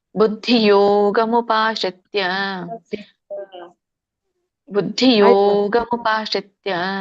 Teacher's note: ಯೋ ಎಳಿಬೇಕು, ಆವಾಗ ನಿಮ್ಗೆ ಗ ಮತ್ತೆ ಮೂ ಸರಿಯಾಗಿ ರಾಗ ಬರುತ್ತೆ.